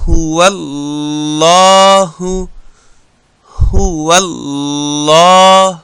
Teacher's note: د ها پیش او د واو جنگول د الله د لام سره د الله لام ډک ویل